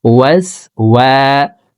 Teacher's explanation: ওয়াও হরফকে 2 ঠোঁট গোল করে 2 ঠোঁটের মাঝে ফাঁকা রেখে উচ্চারণ করে পড়তে হবে, হামজার উচ্চারণ করা যাবে না। আমরা অনেকে ওয়াও হরফকে হামজার উচ্চারণ করে থাকি, ওয়াস ওয়া এইভাবে পড়ে থাকি।